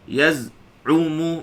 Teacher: Sifatnya rakhawah, suara mengalir masa kita sebut zai yang sukun tadi. Yaz'umu, ain tu tengah halqum. Tengah saya sebut ain, dia bunyi smooth, dia bukan bunyi tersekat.